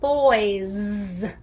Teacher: we spell the word boys, B-O-Y-S, with the S grapheme, but it's said with the buzzing sound